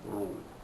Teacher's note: Ru dibaca tafkhim kerana baris depan tebal.